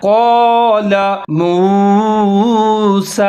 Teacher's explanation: قاف موٹے والا ہے، اس کے ساتھ ہی الف مدہ ہے تو اس کو تھوڑا سا لمبا کر کے پڑھنا ہے